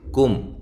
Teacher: میم ساکن کا یہاں بھی اظہار ہے، کاف کو باریک پڑھنا ہے